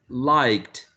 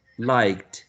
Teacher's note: You see, liked, because we have like and k, would be a voiceless sound, and then the past tense should have t, which is voiceless, right? Liked.